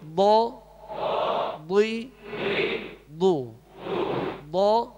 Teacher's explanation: ضاد کو پر پڑھیں گے اور زبر زیر میں ہونٹ گول نہیں ہوں گے